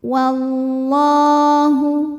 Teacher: Lam jalalah atau lam pada lafaz Allah dibunyikan secara tafkhim karena harokat huruf sebelumnya fathah. Maka lam dibaca dengan tebal. Wallahu. Kemudian alif lamnya dinamakan dengan alif lam syamsiyah sebab alif lam menghadapi huruf syamsiyah yaitu huruf lam. · alif lam dilewat tidak dibaca. Dimasukkan langsung ke huruf lam berikutnya atau diidghamkan. Dinamakan dengan idgham syamsi.